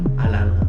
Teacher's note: if you go to Atlanta and you want to blend in, you cannot pronounce the T's